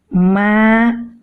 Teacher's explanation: kedua bibir kita bertemu, dan dari rongga hidung keluar suara dengung